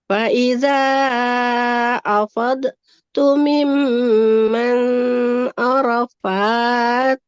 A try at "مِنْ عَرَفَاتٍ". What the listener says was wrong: enggak miman. Bukan miman. Faiza afadtum min arafatin fazkurullah. Jadi bukan miman.